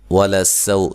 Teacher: سو سین کو باریک سیٹی سے، لام کو موٹا نہیں پڑھنا، باریک پڑھنا ہے